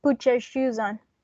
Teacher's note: it's a palatal alveolar sound that it's in the middle of having a alveolar sound and a palatal sound.